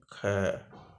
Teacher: और अगर ख बोलें ख, तो है की ध्वनि निकलती है, तो हम इसको कह सकते हैं कि ये महाप्राण है।